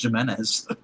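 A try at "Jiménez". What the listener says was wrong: I think he's Hispanic, so the J is like silent or something. It does like that Y sound.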